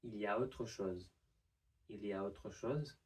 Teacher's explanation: we don't pronounce the L and we blend both of the E sounds together into a semi-consonant y